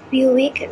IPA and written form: ˈbjuːɪk (Buick)